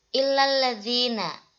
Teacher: Ini alnya al-syamsiyah, tidak dibaca dengan jelas.